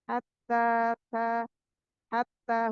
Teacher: ha dari makhraj wasatul halqi tengah tenggorokan ha pedas ya. Hatta hatta huruf bertasydid ditahan dulu jangan terburu-buru.